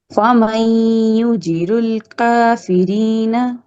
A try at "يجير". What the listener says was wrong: آپ نے یجیر کر لیا، جیم کے بعد یا ہے مد اصلی.